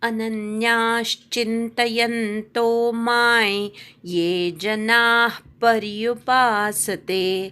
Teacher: अनन्याश न वर आघात येईल. न ला य जोडलाय, त्याच्या आधीचा जो न आहे त्याच्यावर आघात येईल